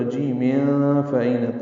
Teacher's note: تنوین کے بعد فا آنے کی وجہ سے اخفا ہوگا